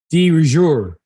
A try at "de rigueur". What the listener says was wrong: The D is wrong, and definitely the rigueur is wrong. So it's not D, not duh. Durger. Durger. Durger.